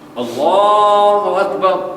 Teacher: لام اور را کی جو آواز ہے بالخصوص جب لام موٹا پڑا جا رہا ہو اور را بھی موٹا پڑا جا رہا ہو تو پھر ان کی جو آواز ہے اپنے مخرج سے تجاوز کرتی ہے، یعنی آواز میں پھیلتی ہے۔ اللہ اکبر جب آپ اللہ کو موٹا پڑھتے ہیں آواز پورے منہ میں پھیل جاتی ہے